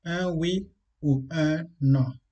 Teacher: c'est vrai que oui s'écrit avec une voyelle, mais la prononciation, le son, prend un W. Donc, le son n'est pas une voyelle.